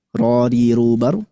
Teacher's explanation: Nah, itu secara getaran sudah lembut, namun yang perlu ditingkatkan adalah sifat tafkhimnya.